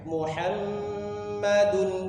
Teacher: hamnya ditahan tiga harakat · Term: gunnah